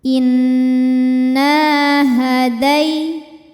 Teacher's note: Nah, hukumnya adalah mad tabi'i zahiri. Sebab ada alif sebelumnya berharokat fathah. Cara membacanya panjangkan 2 harokat.